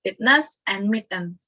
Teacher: The release of the stop consonant into a nasal. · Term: nasal release